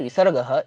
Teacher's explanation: देखिए जैसे विसर्गः ये जो शब्द है इसमें जो विसर्ग का प्रोनाउंसिएशन रहता है उसको ह के तरीके से उच्चारित किया जाता है